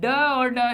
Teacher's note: जिनके उच्चारण में जीभ पहले ऊपर उठकर मूर्धा का स्पर्श करे, फिर झटके के साथ नीचे आए, गले में पीछे की तरफ पर गिरे, तो इसलिए इसको क्या कहते हैं, हम उत्सिप्त व्यंजन कहते हैं।